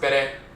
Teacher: This is how you see that N and R interchange when you're talking about the rolling R, the tongue tapping the roof of the mouth once